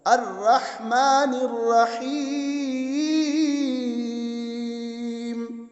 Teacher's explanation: الرحمن بھی ہا ہے، وسط حلق والا